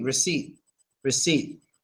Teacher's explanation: we pronounce it just without the P